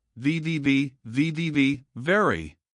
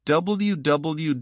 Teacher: Say it slowly first, watching your teeth touch your lip clearly for the V sounds, and your lips round forward with no teeth touching for the W sounds, then speed it up gradually.